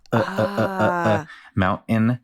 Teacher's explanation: what we call a glottal stop where you make the te with your throat